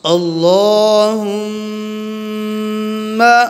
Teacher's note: میم پہ ہم نے غنہ کرنا ہے، میم کے اوپر شد آ گئی ہے